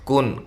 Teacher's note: کن کاف باریک ہے اور نون ساکن کا یہاں اظہار ہے